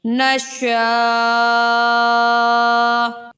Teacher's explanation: یہاں پر ہم وقف کرتے وقت سمپل حمزہ کی آواز نکالیں گے اور اسے ساکن کر دیں گے